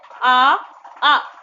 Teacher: तो आ का उच्चारण स्थान कहाँ से हो रहा, कंठ से हो रहा गाइस